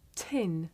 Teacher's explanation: the puff of air at the beginning of tin